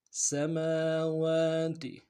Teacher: میم کے اوپر کھڑا زبر ہے، واو کے اوپر کھڑا زبر ہے، دونوں کو ایک الف کی مقدار میں کھینچیں گے